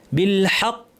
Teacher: কফ ভারী এবং কলকলা হবে বড় কলকলা কারণ তাশদিদ আছে · জিতা। বিল হাক্ক, হাটা পাতলা থাকবে, কফ ভারী এবং কলকলা হবে, বড় কলকলা, কারণ তাসদীদ আছে, এখানে আমরা থামলে বড় কলকলা করব।